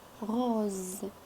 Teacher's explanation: La consonne S عندما تنطق Z وتنطق la consonne Z تنطق la lettre S عندما تكون وسط deux voyelles يعني تكون la voyelle S et une autre voyelle.